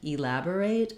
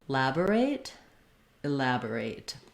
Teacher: So the way to get the rhythm of this word is to start on the stressed syllable lab, say the rest of the word, and then add back that first short reduced vowel